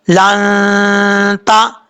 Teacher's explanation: यहाँ नून साकिन के बाद ता आ रहा है हरूफ इख्फा में से, तो यहाँ पे नून साकिन का इख्फा करेंगे, गुन्ना करेंगे एक अलिफ की मकदार